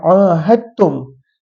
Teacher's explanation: apabila kita baca ahadtum, maka kita baca huruf ta, dal kita tak baca. Dan ini istilah ini dikenali sebagai idgham.